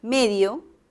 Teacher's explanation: con acento en la primera sílaba